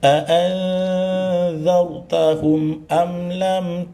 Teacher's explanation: hurufnya yang za, hurufnya yang ta itu tipis ditarik ya. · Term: huruf ikhfa dengung